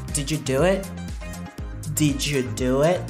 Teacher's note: Quand une question est posée avec par exemple do, did, are, is, have, has, would, could, can et des choses du genre, l'intonation monte et elle reste au sommet sans descendre · Vous voyez que l'intonation monte et elle reste là-haut. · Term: rising intonation